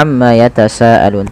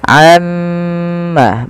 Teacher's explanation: tahan dahulu gunahnya atau bunyi suara mimnya sepanjang dua harakat